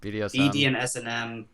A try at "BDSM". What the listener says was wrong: I don't think there's an and. Yeah, but it's pronounced BDSM.